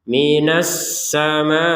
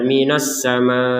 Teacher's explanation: ada tekanannya di hamzah Jadi jangan sekedar panjang kemudian hamzahnya kita tinggal kan tetap semua huruf dalam al-qur'an ini memiliki hak untuk dibaca minasama